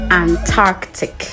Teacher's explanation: So you need to keep the C sound in between the R and the T.